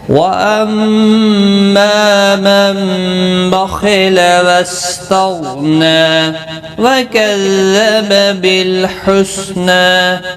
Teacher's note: واستغنى غین مستعلیہ ہے، پر پڑا جائے گا، نا ایک الف کی مقدار کے برابر کھینچ کر پڑھیں گے، وقف کی صورت میں بھی ملانے کی صورت میں بھی۔